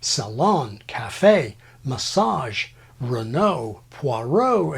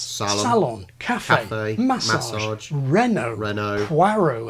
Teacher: American English uses a stress pattern reflecting the final phrase accent of French